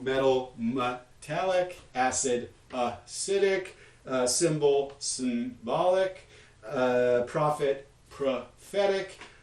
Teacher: these are all neutralizing the schwa as you would expect in an unstressed syllable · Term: neutralizing to schwa